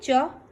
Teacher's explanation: च हमारी जिह्वा जहाँ पे टच होगी उसको तालु बोलते हैं